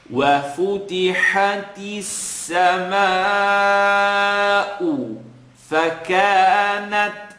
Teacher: you're hearing a little click, or a pop rather in this case, on the ta.